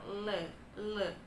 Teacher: Kenapa di lateral karena airflow-nya itu melalui lidah bagian samping teman-teman jadi bagian ujung lidah kita itu menyentuh rongga mulut bagian atas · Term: Liquid lateral